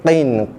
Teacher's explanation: Si qin tu qaf, makhraj ataupun tempat keluar huruf qaf tu, qin di belakang ni, pangkal lidah, belakang lidah menekan pada lelangit lembut. Lelangit lembut ni lelangit yang sebelum anak tekak.